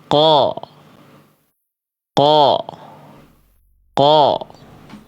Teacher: Ko, tapi cukup diangkat. Cukup diangkat saja pangkal lidah, mulutnya buka. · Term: qaf